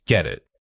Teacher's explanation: The key here is that we don't pause between the two words. The final from get immediately blends into the vowel of it. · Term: linking sounds